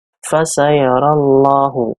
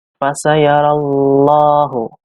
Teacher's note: Huruf lam dibaca tafkhim, yaitu tebal. Sebabnya karena lafal jalalah didahului oleh fathah.